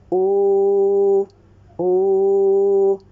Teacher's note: I circled my lips, okay, and as a result the back part of my tongue elevated